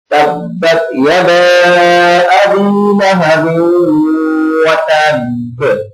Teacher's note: یدا پر مد ہے، مد منفصل ہے، تو لہٰذا اس کو لمبا کر کے پڑھیں گے۔ آپ کو پتہ ہے حروف مدہ کے بعد جب حمزہ دوسرے کلمے میں ہوتا ہے تو وہ مد منفصل ہوتی ہے، تو لہٰذا اس کو لمبا کر کے پڑھیں گے۔